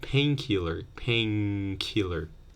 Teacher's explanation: the nah might borrow the Velar place of articulation from Ka